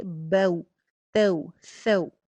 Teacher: لیکن واو لین کے اوپر آواز کو لمبا نہیں ہونے دینا، جلدی ادائیگی کرنی ہے اور اس کا وزن ٹھیک رکھنا ہے۔